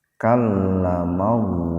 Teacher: lafdzul jalalah didahului fathah, jadi lafaz Allahnya dibaca tebal.